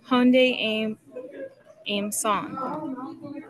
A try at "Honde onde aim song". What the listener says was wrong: Almost. Don't forget this middle part here. So, Honde onde aim song.